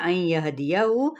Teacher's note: یہاں پہ ادغام مع الغنہ ہے، نون ساکن کے بعد یا متحرک ہے